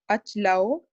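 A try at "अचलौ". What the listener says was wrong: See, you are cutting the vowel. Achalau. There is no achalau. Achala. Achalaha, achalau, achlaha. The impact of Hindi is there too much in the pronunciation. Here we are not allowed to cut the last vowel or any vowel in between the letter, the word, within the letter, within the words, as it is. Achala, achala only, not achla, not achal, right?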